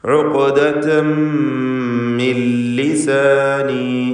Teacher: ഇദ്ഗാം ബിഗൈരി ഗുന്ന നൽകി പൂർണ്ണമായും ലാമിലേക്ക് നൂനിനെ ലയിപ്പിക്കണം. ലാമിൻ്റെ ഉച്ചാരണം ഉണ്ടാവുകയില്ല.